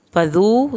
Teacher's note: ज़ाल को नरमी से लेकिन वाव साकिन के साथ आपने खींच के पढ़ना है